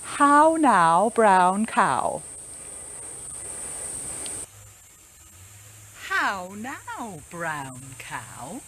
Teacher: our ow sound is an important rounded vowel sound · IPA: aʊ